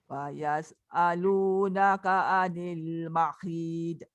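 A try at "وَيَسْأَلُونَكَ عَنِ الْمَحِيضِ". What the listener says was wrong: Jangan bunyi dak tu. Wa yas'alunaka 'anil mahid. Penuhkan lidah tu dekat langit tanpa meletakkan lidah tu ke bawah semula.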